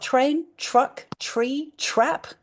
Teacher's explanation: when I make that t sound at the front of my mouth and that sound that pulls my tongue towards the back of my mouth, it sort of comes out as a ch. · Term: ch sound